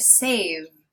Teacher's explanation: The final sound here is the v, and you can hear my voice vibrating.